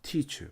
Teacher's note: 그래서 aspirate 되는 거, 기식, 숨이 동반됐다 해서 teacher. 여러분 teacher 발음할 때 앞에 입 앞에 손을 한번 손바닥을 갖다 대고 teacher 바람이 나가요. 아니 종이를 대보면 종이가 팔락거리겠죠.